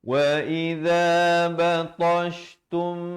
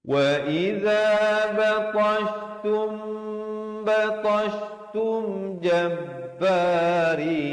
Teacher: di sini dibacakan dengan ikhfa syafawi, mim mati bertemu ba, dua harakat.